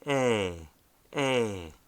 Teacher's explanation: Zlama Qishya is pronounced as an open E, A. It is indicated by placing two slanted points, one above the other, underneath the letter.